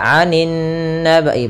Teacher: alif lam yang dia tertulis tapi tidak dibaca, langsung ke huruf setelahnya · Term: alif lam syamsiyah